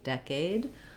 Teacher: In decade, we have a clear tense and the diphthong A with a clear vowel. So decade, I do want to have the dec syllable long and the aid syllable shorter, decade, but I have the stress, but I still have the clear vowel A in aid.